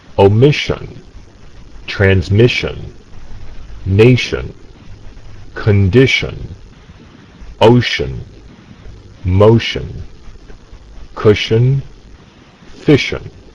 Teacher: the sh sound in omission and transmission is voiceless. In other words, no vibration of the vocal cords. Place your fingertips on your throat to feel this vibration. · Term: voiceless sh sound